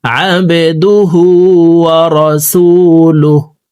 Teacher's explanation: আইন হরফকে হলকের মধ্যখান থেকে উচ্চারণ করব, বা কলকলার হরফ নিচের দিকে ধাবিত করে ধাক্কা দিয়ে উচ্চারণ করব